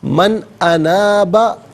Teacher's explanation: من میں نون ساکن پر غنہ نہیں کیا جائے گا، اس لیے کہ نون ساکن کے بعد حرف حلقی حمزہ آ رہا ہے